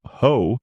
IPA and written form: həʊ (Hoe)